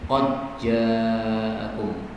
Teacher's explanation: Dalnya diidghamkan kepada jim sehingga dalnya menjadi jim